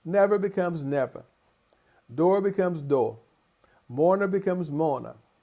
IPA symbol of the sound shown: ʌ